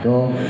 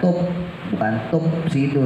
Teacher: Wa idza qila lahum la tufsidu, sama fa-nya jangan ditempelin ya bibirnya kayak kemarin. Jadi bibir bawah digigit gigi atas, tuf ya bagian dalamnya tuf, jadi ada hamesnya, bukan tup sidu, itu bibirnya nempel dua-duanya itu tuf, jadi of-nya ada hamesnya.